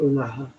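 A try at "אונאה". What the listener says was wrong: O-na-a. Pas Ha. Parce qu'il y a Aleph. O-na-a. Le He de la fin, on ne le prononce pas. C'est comme le T de Bernard Pivot.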